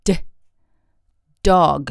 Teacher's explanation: 日本語のダ行に比べるともっと強く舌を顎に押し付けます。そして破裂させる音です。